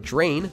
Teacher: We say the word drain with a j sound instead of drain, which would sound a bit odd.